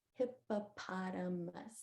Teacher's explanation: our lips came together and we did the sound our p and our m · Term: p sound